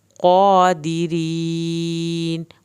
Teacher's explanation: क़ाफ को पुर करना है, क़ा खड़ी ज़बर को खींचना है , दिरीन, आखिर में रा पतला पढ़ना है, या साकिन को